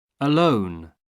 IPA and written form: əˈləʊn (alone)